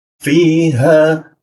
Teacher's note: masuk lagi ke huruf ha posisinya di tenggorokan bagian bawah fiha ya di situ posisinya masuk ke alif nah alif berarti h-nya panjang ha bedakan dengan hamzah jika di sini hamzah mati Cara membacanya adalah fiha ya.